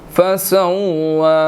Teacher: واو مشدد ہے، اس کے اوپر کھڑی زبر ہے، ہم نے اس کو 1 سیکنڈ جو ہے وہ 1 to 2 سیکنڈز کھینچ کر ادا کرنا ہے